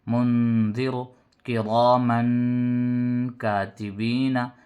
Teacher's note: نون ساکن کے بعد حروف اخفا میں سے زال آیا تو نون کی آواز کو ناک میں چھپا کر پڑھ رہے ہیں